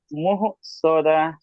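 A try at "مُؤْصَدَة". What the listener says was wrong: মুহ হবে না মু ঝাটকা হামজার উপর সাকিন থাকলে সাকিন যুক্ত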